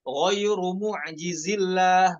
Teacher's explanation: Ketika kita wasol dihapus huruf madnya pada kata mu'jizinya.